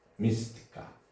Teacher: Mistika sözündə vurğu birinci hecada.